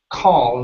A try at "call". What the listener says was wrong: Instead of call, it's an ah sound. Call themselves.